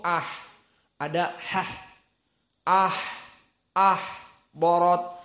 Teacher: dan perlu diperhatikan ahdorat maka ha disukunkan dalam keadaan hams